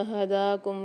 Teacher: 2 چشمے والی ہا کو ہم بھاری آواز کے ساتھ پڑھتے ہیں اور منہ کے خالی حصے سے